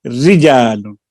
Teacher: اگر را پر زیر ہو تو اس کو ترقیق سے یعنی باریک پڑھیں گے